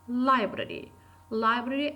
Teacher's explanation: library is pronounced with falling tone